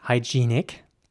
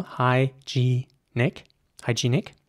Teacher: in British English it would be pronounced hygienic with a long e sound in the middle